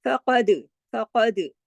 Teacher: दाल जो है इस जज़म के साथ है, तो इस पे हमने कलकला किया।